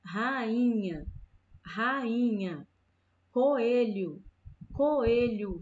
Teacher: Aqui são encontros vocálicos, sílabas que se encontram, mas não ficam juntas, elas ficam em sílabas diferentes.